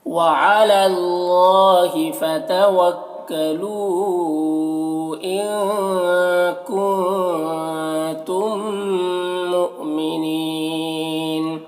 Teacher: میم ساکن کے بعد یہاں پر میم ہے تو میم کو میم سے ملا کر غنہ کے ساتھ میں پڑھیں گے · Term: ادغام شفوی